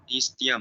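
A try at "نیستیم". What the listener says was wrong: निस्तियम ना नीस्तीम। जहां पे भी ये की आवाज आया ना, आपको बता दिया ए तो है ही नहीं ना फारसी में।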